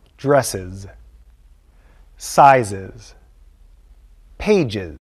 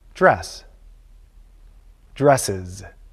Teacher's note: We say is after sounds like s, z, j.